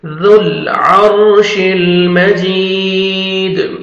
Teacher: दाल को नरमी से अदा करेंगे, सामने वाले जो 2 टीथ हैं वहां पे नीचे से जबान को टच करेंगे तो लाइट सा साउंड आना चाहिए दाल का, और जोर से नहीं पढ़ना, नरमी से अदा होएगा दाल, ठीक है।